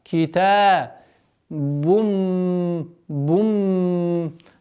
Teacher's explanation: полноценная назализация с полноценной ассимиляцией в размере двух огласовок